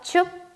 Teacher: 그러면 어떻게 읽을까요? 짧게 춥이 되고요. 그러면 성조는 3성이 되겠죠.